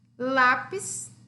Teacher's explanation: Lápis é uma palavra liana porque a penúltima sílaba é a sílaba tônica